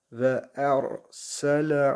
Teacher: ra harfi cezimli kalın okuyoruz